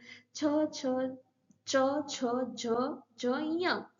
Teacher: जब उच्चारण करते हैं तो हमारी जिह्वा तालु पर टच होती है, इसलिए उन्हें तालव्य वर्ण कहते हैं।